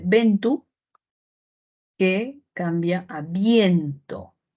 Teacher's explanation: dice ventu que cambia a viento entonces de una vocal a dos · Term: diptongo